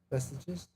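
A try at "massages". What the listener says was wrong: No, not messages. You're still one letter off. It is not silent. You're saying an E, it's an A. Actually, change the two E's in what you said to A's. So instead of ah.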